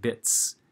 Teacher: if you have bit, which does not vibrate, the S is pronounced like a normal S sound